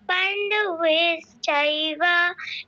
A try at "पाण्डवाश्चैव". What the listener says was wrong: আচ্ছা, একটু ভুল হয়ে গেছে, নয়তো খুব সুন্দর হয়েছে। পাণ্ডবে নয়, আকার আছে, হ্যাঁ, এই জায়গাটা ভুল হয়েছে।